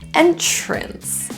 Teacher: you might hear a CH sound in there. Ch-ch-ch.